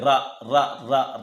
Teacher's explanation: ర ర ర ర అంటే దంత మూలం దగ్గర పలుకుతుంది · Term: దంత మూల్యము